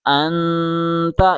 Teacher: اس مثال میں نون ساکن کے بعد تا آیا ہے، اس لیے نون کو غننے کے ساتھ اخفا کرتے ہوئے پڑھا جائے گا